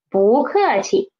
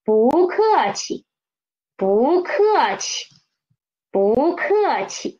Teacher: 气 is the neutral tone. 不客气. We should read them soft and quick.